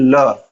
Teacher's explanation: पार्श्विक व्यंजन ऐसे व्यंजन जिनका उच्चारण करते समय जिह्वा हमारे ताल को स्पर्श करती है और अंदर से आने वाली हवा जिह्वा के पार्श्व से अर्थात जिह्वा के बगल से निकलती है, ऐसे व्यंजनों को कहा जाता है पार्श्विक व्यंजन।